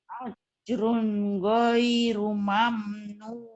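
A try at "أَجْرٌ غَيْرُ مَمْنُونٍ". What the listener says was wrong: Ninnya pendek. Sekali lagi. Mamnunin. Ajrun ghairu mamnunin.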